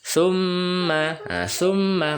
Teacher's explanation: mimnya bertasjid maka dibaca mendengung ditekan dan didengung tiga harakat atau lebih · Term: gunah